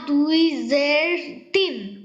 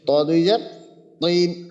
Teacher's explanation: ত এর ক্ষেত্রে জিহ্বার গোড়াটা একটু উপরের দিকে উঠবে